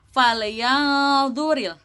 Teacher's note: nun sukun bertemu dengan dho, maka hukumnya adalah ikhfa hakiki, yang mana harus dibaca samar